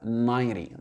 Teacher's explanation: Et l'accentuation, il se fera sur la première syllabe.